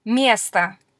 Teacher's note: So the stress in место is on the first syllable, therefore the O turns into sort of an sound.